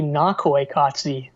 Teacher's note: the emphasis is on the first syllable there